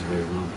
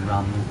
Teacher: And the Ma is pronounced in Sanskrit. In the other languages, the Ma may not be pronounced